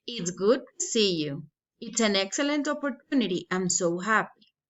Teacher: we have exclamatory sentences falling intonation